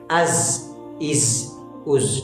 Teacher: وہ گیپ کیوں ہے؟ کیونکہ اندر سے آنے والی سیٹی آواز باہر تیزی سے نکلتی ہے اور سیٹی نکلتی ہے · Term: صفیر